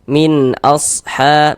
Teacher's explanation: Bunyi nun sukun atau bunyi tanwin yang kita baca jelas. Kemudian tidak didengungkan, maka baca pendek saja. · Nah, jadi kalau ada nun sukun atau tanwin bertemu dengan salah satu daripada 6 huruf yang di samping itu, maka hukumnya adalah idhar halqi. Karena dia idhar maka dibaca jelas, tidak berdengung.